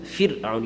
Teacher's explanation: There's a ra in it, but you don't pronounce it full mouth. It's pronounced empty mouth.